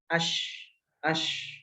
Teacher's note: Jadi ketika kita mengucapkan huruf shin masih ada nafas yang keluar dari mulut. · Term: hams